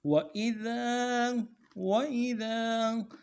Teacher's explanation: سے ادا کرنا ہے، حمزہ کو بھی نرم سے پڑھیں گے، ذال کے بعد الف مدہ ہے، ایک الف دال میں کھینچیں گے، ذال کو باریک پڑھیں گے